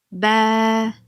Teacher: Fathadan so'ng alif harf harakatsiz kelib, a unlisini 2 harakat cho'ziq talaffuz qilishni bildiradi.